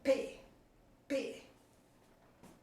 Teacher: fonema bilabial, porque eu junto os dois lábios para pronunciar P. Oclusiva, porque ela sai em forma de explosão P.